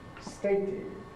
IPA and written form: ˈsteɪtɪd (stated)